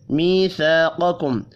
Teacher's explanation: یا مدہ اور الف مدہ ایک ایک الف کے برابر کھینچ کر پڑھی جائیں گی